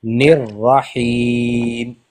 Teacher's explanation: रा को खींचेंगे नहीं बिल्कुल भी